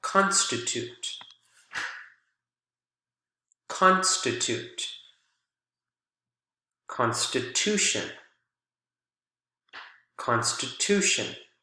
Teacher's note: Here, the strong syllable is at the very beginning, but when we add the shun suffix, the strong syllable shifts over, again, to the syllable that is right before the suffix.